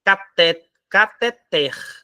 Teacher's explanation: A sílaba tônica é a última. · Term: oxítona